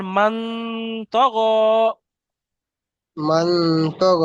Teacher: তাই নুন সাকিনের আওয়াজকে একালি পরিমাণ গুণনা করে পড়তে হবে। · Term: ইখফা